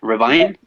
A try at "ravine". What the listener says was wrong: Ravine? Yes,